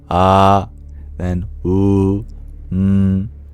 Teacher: as we started closing the lips it went into ooh and then we closed it fully it became M